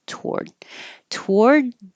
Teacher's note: if you don't round your lips it will sound like toor and it could also be to but I don't hear that